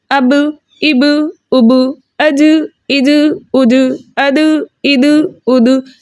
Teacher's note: اینڈ کے اندر ہا کا ساؤنڈ نہ آئے